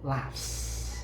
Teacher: So you see all the words ends with the voiceless sound p, t, k, f, and th.